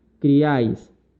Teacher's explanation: En la cual encontramos la I, la A y la I en una sola emisión de voz. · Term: triptongo